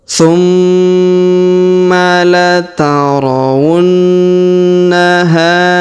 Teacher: Ini adalah huruf idgham berwarna merah jambu. Kita tahan dan kita dengungkan 2-3 harokat.